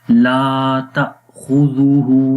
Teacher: لا یہاں پر الف مدہ ہے، الف سے پہلے پھر زبر آ گئی، 1 سیکنڈ لمبا کریں گے۔